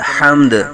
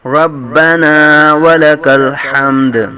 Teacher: دال پیش کو ساکن کریں گے تو دال ساکن ہو جائے گا، دال ساکن میں قلقلہ کریں گے